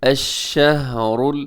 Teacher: پہ دیکھیے گا الشہر، اس میں را موٹا پڑھا جائے گا، ہا کو قلقلہ ہونے سے بچائیے گا